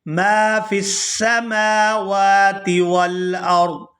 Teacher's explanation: یہاں میم کو الف مدہ کی وجہ سے کھینچ کر ادا کریں گے